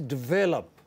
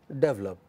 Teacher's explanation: Which vowel is lost? A, the second vowel from left is lost, is elided